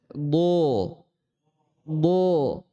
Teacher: Huruf dad dia keluar dari sisi lidah kita, sisi lidah, boleh yang kanan, boleh yang kiri atau dua-duanya, disentuhkan dengan gigi geraham atas. Kalau kita pakai sisi lidah yang kiri, maka sentuhkan dengan gigi geraham atas yang kiri juga.